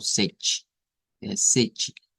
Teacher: la pronunciación es algo como sech, donde la T suena como una ch, como una CH